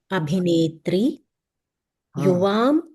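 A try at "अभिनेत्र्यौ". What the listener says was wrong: ఇక్కడ అభినేత్రియ హ్రస్వం. అభినేత్రియ ఈ చివరిలో ఈ త్రియా అని వచ్చే వాటికి దీర్ఘం పెట్టకూడదు.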